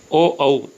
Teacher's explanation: इनका उच्चारण कंठ और ओष्ठ से होता है, इसलिए कंठोष्ठ भी जाना जाता है